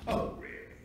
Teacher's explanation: total fry where the vocal cords are going so slowly that you can actually hear them vibrate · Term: vocal fry